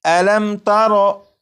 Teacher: ہے، یہ میم ساکن ہے، میم ساکن کے بعد تا ہے، جب میم ساکن کے بعد تا ہے تو اس میم ساکن میں غنہ نہیں کریں گے